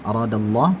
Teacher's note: Aradallah tebal, ya, karena danya ini berharakat fathah, Allahnya jadi tebal.